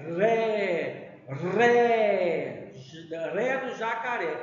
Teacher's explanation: jacaré a sílaba forte é ré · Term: sílaba tônica